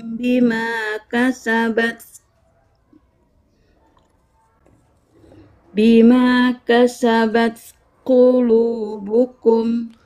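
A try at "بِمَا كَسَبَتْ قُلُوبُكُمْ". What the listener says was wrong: Jangan buru-buru menghamaskan huruf ta itu. Enggak perlu buru-buru. Biarkan dia syiddah dulu baru kasih hamsnya.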